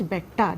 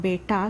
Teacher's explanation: what I am saying is Betta, that is the double consonant, and not Beta with the long vowel sound